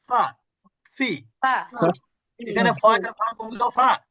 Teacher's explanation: নিচের ঠোট উপরের দাঁতের সঙ্গে স্পর্শ করে